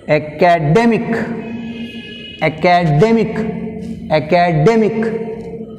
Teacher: So, we take stress on the second syllable from the end.